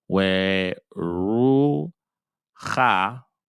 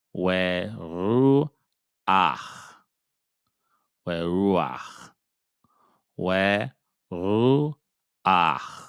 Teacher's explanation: If there is a chet at the end of a word, or an ayin, which we know is silent, but for the most part, let's focus on the chet. If there's a chet at the end of a word and it has a patak underneath it, we will say the patak first before we say the chet.